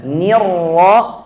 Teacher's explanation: Tapi kalau ra-nya tasydid bil fathi, nirra, walaupun sebelumnya ada kasrah, kita harus mulai ra-nya tebal